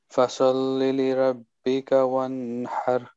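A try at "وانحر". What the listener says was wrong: No, one har. It's one second only. One har.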